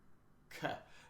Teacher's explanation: Think about when you're making the sound for "g," gate, or "k," as in, well, cat comes to mind, but that's not a K, but it's the sound. So the back of your tongue rises to the roof of your mouth